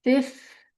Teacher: the W is silent. So all you hear is the R in the front.